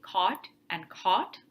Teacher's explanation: If you are from Illinois or Wisconsin, you probably may not have a distinction between C-O-T and C-A-U-G-H-T. I say it the same way.